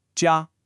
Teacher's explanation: ja is the first tone. It's high and flat.